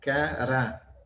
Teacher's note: Então, o acento é no A, porque a sílaba tônica é o Rá.